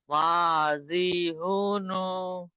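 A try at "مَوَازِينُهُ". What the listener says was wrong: আবার হুটা প্রত্যেকটা হু আপনার শুরুতে আসছে কি করে? শেষে তো আছে মাওয়া জি নু হু। এই ছোট্ট শব্দটা আপনি শুনে নেন না, প্রথমে শুনে নিয়ে তারপরে বলবেন মাওয়া জি নু হু।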